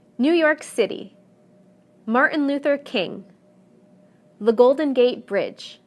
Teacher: whether the proper noun is 2 3 or even 4 words the stress will always fall in the last segment